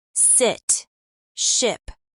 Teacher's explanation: The short I vowel, as in sit or ship, is another sound to master. In American English, it's a relaxed highfront vowel. Your tongue is high but not tense.